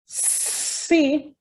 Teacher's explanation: the tip of my tongue towards the alveolar ridge. So that's an alveolar sound.